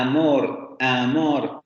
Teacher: la a del español que es más central con respecto a la cardinal